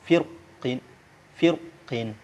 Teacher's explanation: setelah huruf ro itu ada huruf isti'la. Ini qaf ini huruf isti'la. Jadi ro-nya dibaca tebal